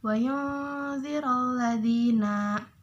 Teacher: ada huruf nun mati bertemu dengan huruf ba maka pembacaannya itu agak samar atau didengungkan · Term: ikhfa